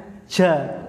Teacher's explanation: Yang pertama jahar, nafas ditahan. Ketika pengucapan huruf jim, nafasnya ditahan jahar. Bukan hamas, nggak ada desisnya.